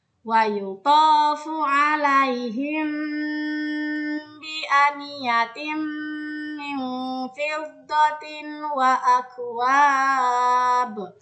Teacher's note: posisi bibir ketika melafalkan ikhfa syafawi tidak tertutup rapat. Ini agar dapat menyamarkan huruf mim sukun disertai dengan gunnah atau dengungan.